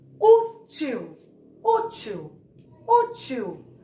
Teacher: O U saiu com mais força.